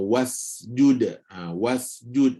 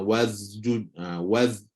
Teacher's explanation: kalau tak kawal dia betul-betul boleh ubah boleh berubahlah Sin jadi macam huruf z